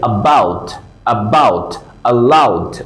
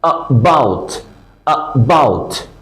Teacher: এটাকে বলা হয় শোয়া সাউন্ড, একেবারে শর্ট ভাওয়াল সাউন্ড এটাকে বলা হয়। যেমন ধরেন এটা স্বরে আ, কিন্তু খুব শর্ট ভাবে বলার কারণে অনেক সময় আমরা শুনি না।